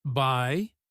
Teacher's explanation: If the pitch stays up like by, it means they are waiting for you to say something back.